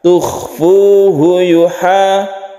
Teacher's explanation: Di sini ada yang makhrajnya ada di tenggorokan yaitu kha